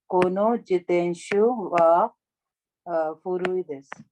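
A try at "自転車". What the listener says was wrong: So this is the sha, jitensha.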